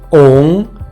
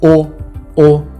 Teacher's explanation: ОУН - це носовий звук і просто оо - Це звичайний звук о